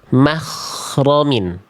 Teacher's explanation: ghoinnya keluar udara sehingga jadi huruf kho